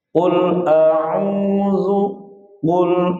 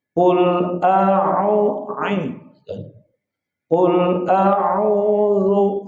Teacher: ain ini wasul halq tengah-tengah tenggorokan